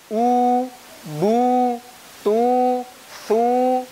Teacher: Ini juga sama seperti alif, keluarnya di al-jauf. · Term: al-wawul maddiyah